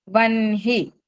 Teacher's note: అలాగే నా ఒత్తు గురించి చెప్పుకోవాలంటే వన్హి, హీకి నా ఒత్తు రాస్తాము, ప్రొనౌన్సియేషన్ వచ్చేసరికి నా ముందు పలికి హా తర్వాత పలుకుతాము